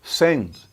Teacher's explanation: Imagine em português de Portugal, como era o de Camões, sent. Quase não se ouviria aquele T